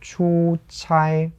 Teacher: So it's two first tones here.